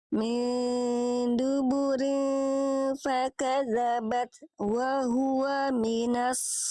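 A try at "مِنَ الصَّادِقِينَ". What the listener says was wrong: huruf shortnya udah tebel tapi tebalnya nggak dari awal. Cuman pas harokat harusnya ketika Ibu Ur melafalkan short itu jangan nyentuh sin dulu, minas, tapi langsung naik minas. Nah, langsung disertai dengan pangkal lidah.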